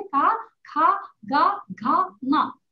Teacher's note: अ नहीं है, अ नहीं है, आ ही आना चाहिए। लेकिन हम दूसरी भाषाओं के प्रभाव से अ बोलने लगे हैं, अ नहीं है, आ ही बोलना चाहिए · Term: आ साउंड